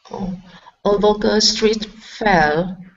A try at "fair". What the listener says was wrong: Okay, so instead of foul, okay, curve your tongue up. Fair. Okay, so here you're moving your lips, saying foul. Instead of an oo, it's fair. Fair. Okay, a local street fair.